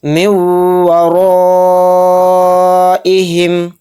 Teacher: را کے اوپر زبر ہے تو را کو موٹا یعنی پر پڑھیں گے · نون ساکن کے بعد واو آ رہا ہے تو اس میں ادغام واو کا قاعدہ ہو رہا ہے، یہاں پر تھوڑی دیر آواز کو ہم روک کر چلیں گے یعنی غنہ کریں گے ۔ اور را کے اوپر زبر ہے تو را کو موٹا